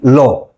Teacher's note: এই পার্শ্বিক ধ্বনির উদাহরণ হচ্ছে ল। তার কারণ এই ধ্বনিটি যখন উচ্চারিত হয় তখন আমাদের জিহ্বার অগ্রভাগ অল্প করে ওপরে ওঠে তালুকে স্পর্শ করে